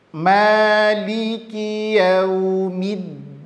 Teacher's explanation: yang bertasdid mesti ditekan sedikit suaranya